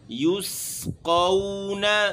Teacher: یسقون یا کے اوپر پیش ہے، یہاں ہونٹوں کو گول کریں گے، پھر قون قاف، اور اس کے بعد واو آ رہا ہے تو اس واو میں بھی ہونٹ گول ہوں گے۔